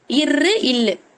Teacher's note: நுனி தானே, நுனி பகுதி தானே இருந்தது. இரு இல்லு, நாக்கோட நுனி மேல்வாய பொருந்தும். இல் சொல்லி பார்க்கும்போது பாருங்க மேல்வாய பொருந்தும்.